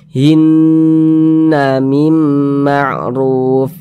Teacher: itu kita tahan kita panjangkan sejenak anfusihin sihin si Hin mim di bagian hinnya yang kita tahan kita panjangkan sejenak hinna mim Ma'ruf ah begitu kemudian di sini ada huruf nun · Sebelumnya nih ada huruf yang memiliki tanda baca kasroh, berarti nun bertasydidnya ini hukumnya gunnah musyaddadah. Karena dia gunnah, cara membacanya ya digunakan tuh ya didengungkan, jadi berdengung cara bacanya begitu. Jadi suaranya itu kita tahan, kita panjangkan sejenak. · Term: ghunah musyaddadah